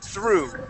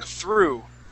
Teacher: when you pronounce that TH, you stick your tongue between your teeth and you say through.